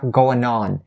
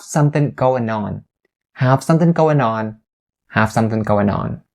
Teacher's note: the word going now only has the n sound at the end and you link it to on